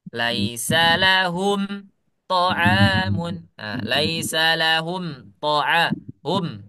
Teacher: kita berhenti sejenak tanpa mengambil nafas untuk melanjutkan bacaan. Itu disebut dengan saktah